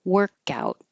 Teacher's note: The noun has stress on the first syllable